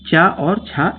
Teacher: चा वर्ग के जितने भी वर्ण होते हैं वो तालव्य वर्ण कहे जाते हैं